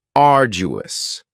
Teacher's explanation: arduous has three syllables and the stress is on the first syllable